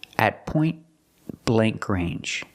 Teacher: The T in at is a stop T at point blank range. The T in point is between consonants, so you don't really hear it. It's a stop T, but you don't really hear it.